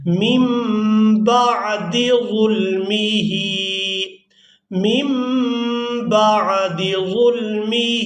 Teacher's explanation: نون ساکن کے بعد با آ جائے تو وہاں جو نون کی آواز ہے اس کو ہم میم کے ساتھ بدل کر ادا کرتے ہیں